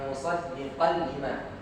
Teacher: Hilangkan nun ya, tanwinnya. Langsung idgham, langsung dimasukkan ke lam ya, ke huruf lam, tapi tanpa gunnah. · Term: idgham bila